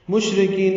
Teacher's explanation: شین ساکن پہ ہم سے تفشی ہے، آواز میں پھیلتی ہے اور سانس جاری رہتی ہے. را باریک ہے، کاف باریک ہے، کاف کو لمبا کرنا ہے، نون ساکن پہ اظہار ہے، یہ اظہار ہے، نون پہ قلقلہ نہ ہو.